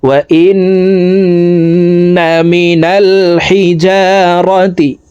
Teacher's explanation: এখান থেকে বলছি, ثم قست قلوبكم من بعد ذلك فهي كالحجارة أو أشد قسوة وإن من الحجارة وإن এখানে ওয়াজিব গুন্নাহ, হরকতের বামে নুনের উপরে তাসদিদ আছে, এই কারণে জেরওয়ালা হামজাটি তাসদিদওয়ালা নুনের সাথে 3 সেকেন্ড পরিমাণ গুন্নাহ করে পড়ব।